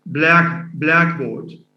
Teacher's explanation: So if stress, in case of say blackboard, it's one word with stress on the first element. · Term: compound